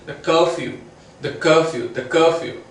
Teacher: So the is unstressed and cur is stressed. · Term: weak and strong